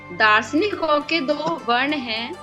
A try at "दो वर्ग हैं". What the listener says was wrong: दो वर्ग हैं, नॉट वर्ण।